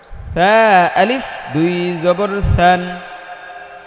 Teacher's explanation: সা জিব্বার আগা, দাঁতের আগা নরম করে বলতে হবে, জিব্বাটা একটু বের করে।